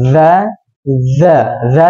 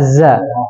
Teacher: Kalau dza di mana? ujung lidah dengan dua gigi ya kan kalau za ujung lidah di bawah.